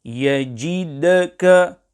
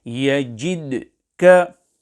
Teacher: When carrying out qalqalah on the dal sakinah of yajidka, care must be taken to ensure that the dal is not vowelized, i.e., a fatha sound is not created on the letter dal. Hence, to recite yajidka will be incorrect.